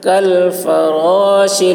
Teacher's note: فا کو فا بولتے وقت ہوا نکلے گی